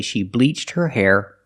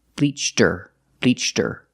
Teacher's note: the H is silent so you hear bleacher